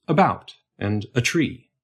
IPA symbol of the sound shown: ə